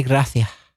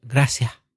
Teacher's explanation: en Cáceres, donde yo vivía, la gente dice gracias con la C, cecean.